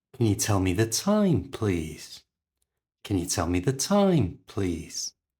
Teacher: when I ask the question my voice goes up in Pitch